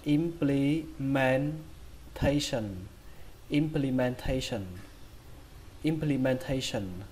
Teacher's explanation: Trọng âm của từ này rơi vào hai chỗ, đó là cái âm đầu tiên, âm im. Âm im này nó giống như là từ im lặng ở trong tiếng Việt. · Âm im này nó giống như là từ im lặng ở trong tiếng Việt. Và trọng âm chính của nó thì lại rơi vào âm thứ tư, đó là âm thay. Âm thay. Âm thay trong chữ thay ma, các bạn lấy chữ thay đó và các bạn đẩy hơi thêm một chút nữa, thay thay.